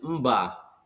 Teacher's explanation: konsonan nasal homorgan dengan konsonan yang mengikutinya